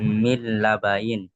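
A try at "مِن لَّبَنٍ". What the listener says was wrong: মিল্লাবানিন। ইন নয়, নিন নিন। জি, মিল্লাবানিন।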